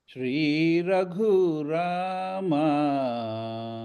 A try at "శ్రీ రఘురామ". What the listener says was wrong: అది ఇంకొంచెం ఇంకొక రవ్వ వెళ్తే సరిపోతుంది. శ్రీ రఘురామ